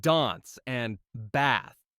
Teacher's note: In American English, those words sound more like dance and bath with a flat A sound.